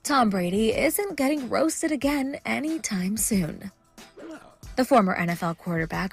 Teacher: it's a little bit breathy